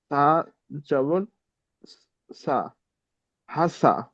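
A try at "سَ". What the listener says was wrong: এখানে সা বলছেন, সা হবে না, সিন। এই অক্ষরটি সিন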